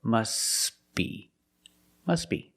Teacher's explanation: But if you link the words, you pronounce it must be, must be. The T is silent because it's between consonants when you link the words.